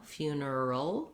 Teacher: in the word funeral, we're back to first syllable stress, and I would write it like few, na, or neural.